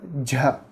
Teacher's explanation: Dja é uma consoante palatal, sonora, aspirada. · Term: com aspiração